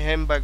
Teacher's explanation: rapid speech অর্থাৎ দ্রুত কথা বলার সময় এটা ঘটে থাকে হ্যান্ডব্যাগ দ্রুত কথা বলার সময় হ্যামব্যাক হয়ে থাকে because the M and বি sounds আর both বিলাবিয়াল consonant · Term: অ্যাসিমিলেশন